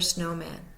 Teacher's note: the first syllable snow is primary the second syllable man is secondary